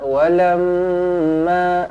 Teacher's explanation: Kita tengok kepada hukum tajwidnya satu persatu insya-allah walamma ja walamma mim sabdu di sini dibaca dengan dengung dua harakat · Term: wajibul ghunah